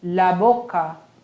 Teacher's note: Ó, igual, só a pronúncia mesmo que vai ter uma... vai ficar mais forte no O e sempre vai ser bo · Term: Som fechado